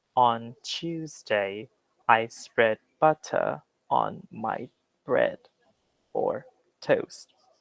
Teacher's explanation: and butter it doesn't have those two d noises that american english has